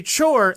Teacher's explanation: where there's a CH, it's a T followed by a sh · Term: one sound blended together